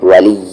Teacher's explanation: زور سے ملائیں گے یا میں کیونکہ تشدید ہے